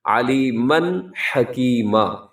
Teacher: علیمن پہ اظہار حلقی، علیمن حکیما، کیونکہ تنوین کے بعد ہا حروف حلقی میں سے